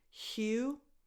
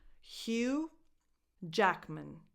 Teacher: Hugh, the last two letters are silent, so it's just Hugh, a strong H, and then U